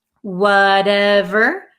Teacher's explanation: So this T becomes a flap T.